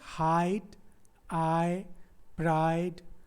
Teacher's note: इसके बीच दो वॉल्स मिलके एक साउंड बना रहे हैं · आ भी एक स्वर है और ई भी एक स्वर है. इन दोनों स्वरों के बीच में कोई भी व्यंजन नहीं है, यानी कोई भी कॉन्सोनेंट नहीं है, इसलिए इसको हम वन काउंट करेंगे. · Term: डिफ्थोंग